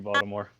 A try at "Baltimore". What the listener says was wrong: You guys are definitely not from the area. You pronounce the T.